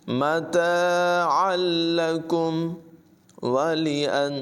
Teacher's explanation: तनवीन के बाद लाम है हुरूफ़ यर मालूम में से, लेकिन बग़ैर गुन्ने के इदगाम होगा, मिलाकर पढ़ेंगे और गुन्ना नहीं करेंगे। मताअन लकुम वलिअनआमिकुम, आइन की आवाज़ नुमाया होगी।